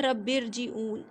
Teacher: تو را کے اوپر ساکن ہے اور اس سے پہلے زیر دوسرے کلمے میں اگر آ جائے تو بھی را کو موٹا پڑھیں گے، اس کو باریک نہیں پڑھیں گے